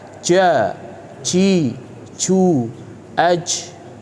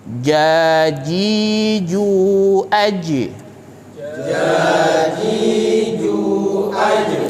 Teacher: huruf Jim bukanlah huruf hams ya dia termasuk huruf jahr yang ketika diucapkan aliran nafas terhenti · Jim itu merupakan huruf Qalqalah yang ketika sukun harus dipantulkan dan tidak boleh kita menyertakan huruf Jim dengan apa dengan aliran udara